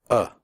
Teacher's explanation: the sound is made with your mouth slightly open and relaxed and without moving your tongue it comes from the throat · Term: schwa